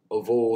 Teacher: should be pronounced with a V, a bilabial fricative, not a V, which is a labiodental, lip to teeth, V, as in English.